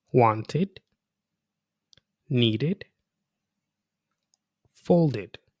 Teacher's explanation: the ed is pronounced as a separate syllable with an id sound. It rhymes with kid and lid. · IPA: /ɪd/